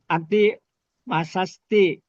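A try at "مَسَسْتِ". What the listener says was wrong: bukan sas Pak ya. Masati.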